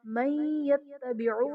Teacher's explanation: من یتبعو میں نون ساکن کے بعد حروف یرملون میں سے یا آ رہا ہے، تو یہاں پر ادغام مع الغنہ کا قاعدہ ہوگا، یعنی نون ساکن میں ہم غنہ کریں گے۔